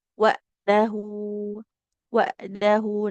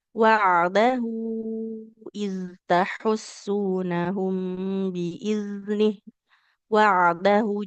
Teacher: aliran suara huruf ain itu tidak terlalu lama ya karena dia tawasud, aliran suara yang pertengahan jadi cenderung lebih lebih sebentar kalau dibandingkan seperti kita mengalirkan suara untuk huruf sin, shin ya, atau huruf zal seperti itu.